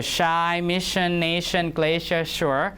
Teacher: uh death meaning so this one is voiceless right sh sh your tongue tip doesn't touch anything in the mouth